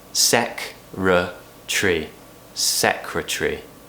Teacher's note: an American would pronounce this with an extra syllable in there we actually relaxed this word a lot in British English SEC tree secretary rah-rah that's a sound in the middle secretary